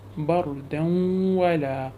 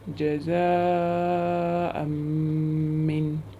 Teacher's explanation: we will pronounce it with gunna for 2 beats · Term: idgham with gunna